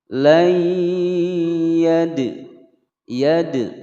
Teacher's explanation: huruf dal berharokat sukun, kemudian berada di tengah-tengah kalimat, dipantulkan ya. Hukum bacaan qalqalah sughra.